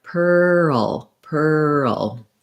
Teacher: i'm going to do my purr gliding into the dark l